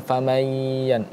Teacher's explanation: nunnya ini tidak terbaca, langsung kita baca ya-nya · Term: idgham bi gunnah